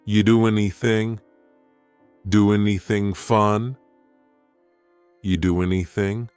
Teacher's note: we link together doing because we're going to drop the G · we're going to push those two together because there's two N sounds side by side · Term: dropping linkings